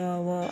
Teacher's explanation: संघर्षहीन व्यंजन में य व आता है